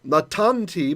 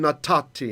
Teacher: The Hebrew N, which is the noon, gets sandwiched in, and it assimilates with the next letter. It causes a duplication.